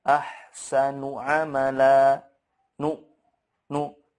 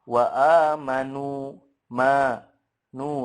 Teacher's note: Pastinya kalau kita memegang hidung itu ada gunahnya, tapi hanya satu harokat saja. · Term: gunah angkos